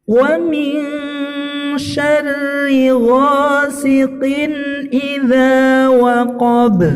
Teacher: waqab, ini huruf qalqalah diwaqafkan, diberhentikan, maka dia qalqalah kubra ya.